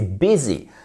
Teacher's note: Et attention, c'est pas busy, c'est busy. Ici, le U se prononce comme un I court.